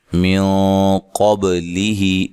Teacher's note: نون ساکن کا اخفا مع الغنہ ہے لیکن موٹا اخفا کرنا ہے